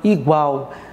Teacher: Veja aqui, igual, aqui, o e o a, tá? Igual, onde você percebe que o U é a semivogal e o A é a vogal. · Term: ditongo